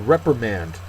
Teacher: First syllable is accented.